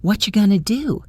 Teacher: What are you becomes what going to becomes going to. An entire six-word sentence is reduced to three fluid sound units.